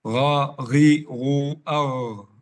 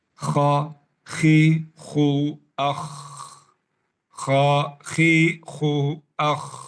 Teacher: Jadi kalau kita mengalirkan angin dalam huruf ghain berubah ke kha langsung. Kalau kita tertahan angin dalam huruf kha berubah ke ghain langsung.